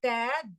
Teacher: த அப்படிங்கிறப்ப நுனி நாக்கு தான் போகுது, அப்படி ஷார்ப்பா போய் டச் ஆகுது